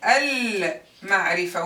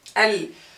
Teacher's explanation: mim belongs to the moon letters. That's why we say al-ma'rifa. We pronounce the lam.